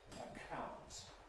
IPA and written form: əˈkʰaʊnt (account)